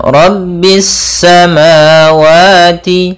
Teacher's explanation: Pada bacaan Rabbis samawati, di sini ada alif lam syamsiyah, yaitu alif lam yang tertulis tapi tidak dibaca sehingga langsung kepada huruf sin yang bertasydid